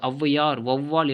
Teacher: ஔ என ஔகார எழுத்து தனித்து வரும் இடங்களில் 2 மாத்திரை அளவு முழுமையாக ஒலிக்கிறது. ஔவையார், வௌவால் என சொற்களின் முதலில் வரும் பொழுது தனக்குரிய 2 மாத்திரை அளவிலிருந்து குறைந்து 1.5 மாத்திரை அளவு ஒலிக்கிறது. இவ்வாறு குறைந்து ஒலிக்கும் ஔகாரம் ஔகார குறுக்கம் அப்படின்னு சொல்கிறோம்.